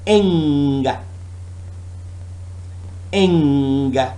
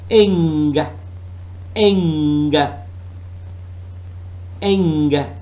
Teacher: Note that the n sound in this word is not made at the alveolar ridge, which is why it is distinct from n sound. It is ing. You can feel the back of your mouth.